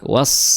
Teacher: jangan lupa pangkal lidahnya naik ya berbeda dengan sin itu pangkal lidahnya tidak naik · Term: shad